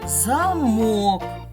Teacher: фея передвинула наголос з першого складу на другий